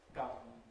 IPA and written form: k⁼ʌm (come)